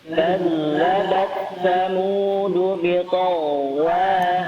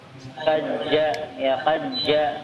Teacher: makhraj zal yaitu ujung lidah menempel pada ujung gigi seri bagian atas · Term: huruf zal